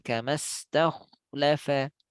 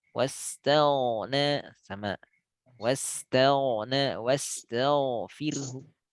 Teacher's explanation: Sama makhraj dengan kho, bedanya adalah kalau kho ada angin, kalau ghain nggak ada angin